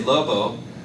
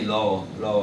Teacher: What that means is that the articulators themselves never come into complete contact with one another, and they're more vowel-like on the spectrum than consonant-like, and so they're very hardly perceptible when they're spoken. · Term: approximates